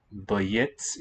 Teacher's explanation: In the masculine, that final E devoices.